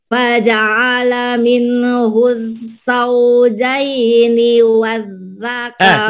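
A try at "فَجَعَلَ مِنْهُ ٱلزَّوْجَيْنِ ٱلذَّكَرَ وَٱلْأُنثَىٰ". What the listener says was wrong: Enggak ada wanya. Ibu mikirin zai dia sama jim nih.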